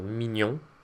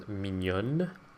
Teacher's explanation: ON is a nasal on, whereas ONNE is a non-nasal un